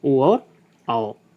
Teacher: उच्चारण कंठ और ओष्ठ से होता है, उन्हें क्या कहा जाता है? कंठोष्ठ कहा जाता है।